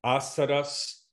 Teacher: the first is stressed, so it's fuller, but the others reduced to schwa